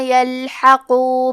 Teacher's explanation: یلحقو میں لام ساکن ہے، تو ہمیں لام کو ظاہر کرنا ہے، حرف القاف کو موٹی آواز میں پڑھیں گے